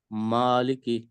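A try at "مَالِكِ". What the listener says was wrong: ماں کو تھوڑا سا لمبا کریں، ٹھیک ہے. آپ نا جب یہ الفاظ پڑھیں تو ساتھ بے شک اپنی 2 انگلیوں کو کھول کے اس کے برابر اس کی مقدار رکھنے کی کوشش کریں. آپ نا اس کو پڑھتے ہوئے تھوڑا سا جھٹکا دے رہے ہیں.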